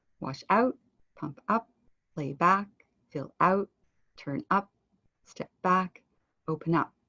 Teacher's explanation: you're saying the second part louder